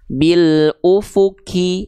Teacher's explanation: Ya, misalnya di sini ya, bil ufuki. Nah, masih kedengaran ada k. Bil ufuki, berarti kurang dalam pangkal lidahnya. Terlalu keluar. Kalau terlalu keluar tempatnya huruf kaf.